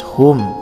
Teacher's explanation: hum izhar syafawi, mim mati atau sukun menghadapi huruf ain, cara bacanya jelas